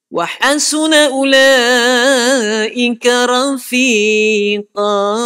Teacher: Huruf ra. Tebal. Betul dia huruf tafkhim. Tapi tak payahlah muncung baris atas.